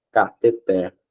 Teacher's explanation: E a sílaba tônica é a última aqui, ó, cateter.